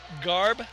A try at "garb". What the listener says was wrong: Garb. Garb. You gotta hear that R. Hear that R, mate.